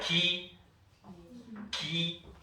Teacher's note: 기역 발음이 어떻게 나냐면 혀뿌리 쪽이 연구개 쪽을 꽉 막았다가 터트리면서 소리가 나요. 그래서 파열음이었죠.